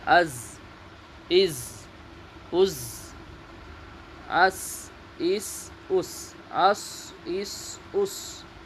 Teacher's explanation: زا، سین، صاد زبان کی نوک اور سامنے کے اوپر نیچے والے 4 دانتوں کے کنارے سے ادا ہوتے ہیں